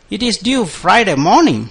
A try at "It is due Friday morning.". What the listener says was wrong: Yes, that's good. Very good.